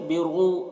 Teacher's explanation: واو ساکن سے پہلے پیش ہے تو یہاں پر کیا ہوگا، واو مدہ کھینچیں گے